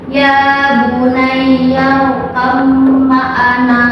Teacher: Di sini ada contoh ba ketemu mim ya. Nah, kan ba sama mim makhrajnya sama kan, sama-sama huruf bibir